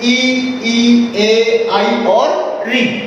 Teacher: इन अग्र स्वरों के उच्चारण में जिह्वा का अग्र भाग सक्रिय हो रहा है